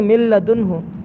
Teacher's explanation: جیسے یہاں پر دیکھیں من لدنہ، یہاں پر من نون ساکن ہے، اس کے بعد لام ہے، تو میم نون ساکن کو لام سے بدل کر ایک کرنا ہے، یعنی ادغام کرنا ہے، تو یہاں پر ادغام تو کریں گے لیکن یہاں گنہ نہیں کرنا، کہ نون کو لام بنا کر دونوں کو ایک لام کر دیا